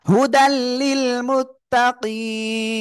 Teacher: একালিফ মাদ এর পরের অক্ষরে সাকিন হওয়ার কারণে আমরা একালিফের জায়গায় তিন আলিফ টেনে পড়বো